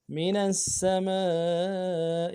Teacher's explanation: سین کی سیٹی باریک ہوگی ، اور سین کے بعد میم ہے، میم کے ساتھ الف